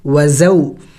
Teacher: वाव साकिन है, इससे पहले ज़बर है, और या साकिन हो और उससे पहले ज़बर हो तो उसे हरूफ़ी लीन कहते हैं। और हरूफ़ी लीन के पढ़ने का तरीक़ा ये है कि इनको जल्द पढ़ा जाता है, इनको लंबा नहीं किया जाता।